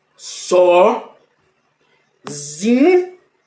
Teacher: o Zi possui maior intensidade Então deve ser classificada como tônica então a sílaba tônica da palavra sozinho é O zi é